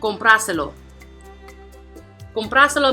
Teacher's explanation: the word has 4 syllables, and it's the first one which is going to have the accent. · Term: prosodic accent